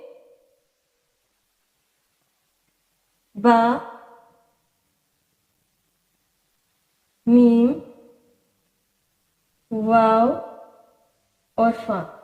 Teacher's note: یہ چار حروف ہیں جو کہ شفتان یعنی دونوں ہونٹوں سے ادا ہوتے ہیں